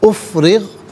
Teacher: را کے نیچے زیر ہے، را کو باریک کر کے پڑھا جائے گا